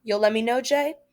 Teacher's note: So the let me, the T in let blends with the following M in me